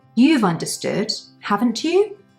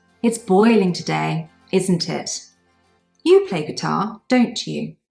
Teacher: we use Rising intonation in the tag the tone of our voice goes up because it's more of a question · if on the other hand I am 100% sure my statement is correct my intonation will go down for the tag